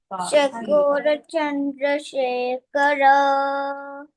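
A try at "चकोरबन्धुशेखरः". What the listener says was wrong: चंद्र कहाँ है? चकोर बंधु शेखर. अरे dear, it's not a Chandra over there. It's a Chakor Bandhu Shekhara. Look into the fifth shloka.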